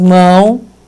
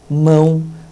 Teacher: esse O passa a ter o som do U, mão. Ele fica com som fraco, portanto, ele é uma semivogal.